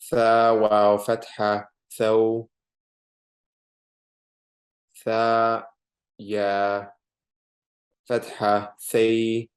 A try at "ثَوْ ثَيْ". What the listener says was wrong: No, so don't say thaw, thay. Don't hold it. Just thaw, thay.